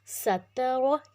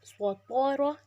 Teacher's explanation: اب سین میں سیٹی، تا پتلا، را موٹا، اب سین پہ سیٹی، تا موٹا، را موٹا